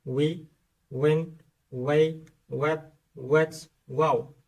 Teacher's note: барои талаффузи ҳарфи W лабҳоро ба пеш карда, гирд карда, мисли U талаффуз мекунем.